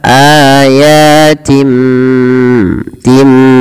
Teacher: Berasal dari kata juga qalbun ya, membalikkan. Maka di sini kita membalikkan bunyi suara nun kepada huruf mim. Awalnya ayatin, karena ada bertemu dengan ba diganti dengan mim suara nunnya. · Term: iklab